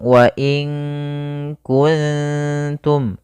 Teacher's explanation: Maka menyamarkannya langsung ke huruf kaf. Kalau kaf makhraj huruf kaf itu kan di pangkal lidah mendekati huruf qaf. Maka ki, maka wa inku langsung wa in kuntum. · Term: ikhfa